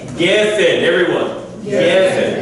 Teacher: So the emphasis goes on the first syllable.